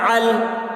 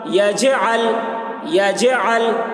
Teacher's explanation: لام حروف قلقلہ میں سے نہیں ہے، اس لیے لام میں قلقلہ نہ ہوگا۔